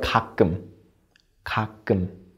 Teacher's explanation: 쌍기역 has a higher pitch than 기역 has. And try not to push out air when you pronounce 쌍기역.